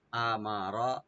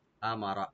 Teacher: মিমের উপরে জবরটা একটু স্পষ্ট করে পড়তে হবে, আর রা এখানে ডিপ হবে।